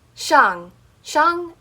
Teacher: shang is a falling tone. So you're going to be going downwards with it.